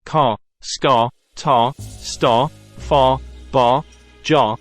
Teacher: the sound of the A is distorted by the controlling R that follows it. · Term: R-controlled words